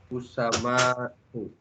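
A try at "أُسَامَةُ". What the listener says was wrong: Sanya panjang, Pak.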